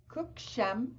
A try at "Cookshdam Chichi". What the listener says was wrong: Put a T in there. Cookshdam.